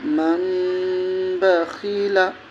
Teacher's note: جیسے من بخیلا، جیسے اخفا میں پڑھتے ہیں غنہ ہوگا، ناک میں تھوڑی دیر آواز کو روکنا